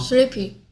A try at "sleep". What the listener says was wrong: 이게 sleepy야? 이 소리도 있나 어디에? 이게 어떻게 sleepy야? sleep